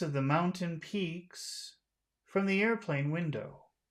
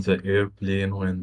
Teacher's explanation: add a little bit of a high tone to the beginning to the the important word air but we have to finish